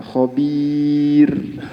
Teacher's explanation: Pada kalimat khabir yang kebetulan di sini waqaf, maka hati-hati pada pengucapan huruf ra. Jadi berhenti pada ra yang disukun di sini, kebetulan di sini adalah tipis, tetap harus dimunculkan suara ra yang kecil. Maka tidak boleh berhenti kemudian tidak kedengaran huruf ra-nya.